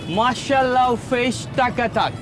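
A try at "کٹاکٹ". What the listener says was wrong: No, not takatak. Mashallah fish katakat. Katakat. Katakat.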